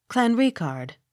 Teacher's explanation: Accent on second syllable.